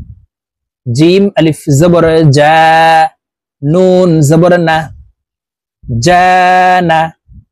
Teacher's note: জিম হরফকে জিহ্বার মধ্যখান থেকে উচ্চারণ করতে হবে